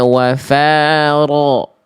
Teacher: Angkat si pangkal lidahnya lagi. Karena ro ketika fathah itu dibaca dengan tebal ya. Tebal. Lalu di sini huruf nunnya tadi tidak ditasdidkan Bunda.